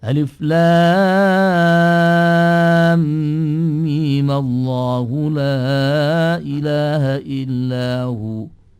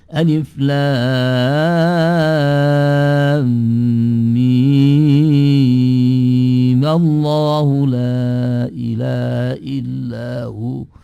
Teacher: Melihat kepada sukunnya itulah, maka memang di dalam riwayatnya mimnya juga bisa dipanjangkan dengan 6 harokat sehingga menjadi alif lam mim Allahu la ilaha illahu. Di situ mimnya menjadi panjang dengan ukuran 6 harokat melihat kepada aslinya, sukun aslinya memang 6 harokat. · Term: mat lazim harfi